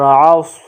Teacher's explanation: صاد کو پر پڑھیں گے، یعنی صاد کو موٹا پڑھیں گے